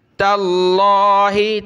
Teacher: تاللہ, تا کو ملا لفظ اللہ کے ساتھ, تا پر زبر ہے تو لفظ اللہ کو موٹا کرنا ہے